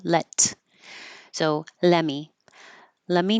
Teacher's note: you can put your tongue in the T position let me but you don't release the air flow let so let me let me know what time there's two